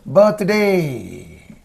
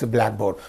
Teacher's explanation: the first word receives the stress